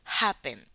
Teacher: Happen, la sílaba tónica es ha, happen. Y la sílaba átona, la que no suena, es pen.